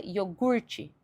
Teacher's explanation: no português é iogurte, e eu enfatizo esse gur no final da palavra, penúltima sílaba.